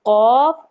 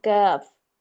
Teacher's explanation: कॉफ मोटा होता है और कफ बारीक होता है। कफ के अंदर थोड़ा सा मुंह के करीब हम आते हैं, और कॉफ के अंदर ज्यादा हम हलक की तरफ इंक्लाइंड होते हैं, हलक की तरफ हमारा झुकाव होता है।